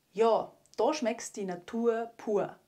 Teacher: Hier haben wir wieder die typische Veränderung von A zu O, Ja zu Ja und Da zu Da.